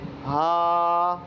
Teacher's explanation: ہا اور حمزہ حلق کے نیچے والے حصے سے نکلتے ہیں